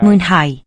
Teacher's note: That Y, Mwynhau. the W-Y there is a sequence of vowels, that's a diphthong, and AU spell is an I sound.